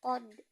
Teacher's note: hukum bacaan Qalqalah qad maka dibaca memantul